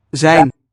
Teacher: Dutch likes these voiced fricative initials. Zijn. Seems to be their preferred outcome of a fricative.